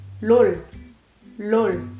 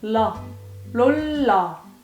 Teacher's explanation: so you noticed I can roll my tongue a little bit